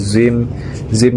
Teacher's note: Terus zim di sana adalah idgham bigunnah karena ada tanwin kasrah yang bertemu dengan huruf mim. Cara bacanya tanwin kasrah dimasukkan ke huruf mim sambil berdengung.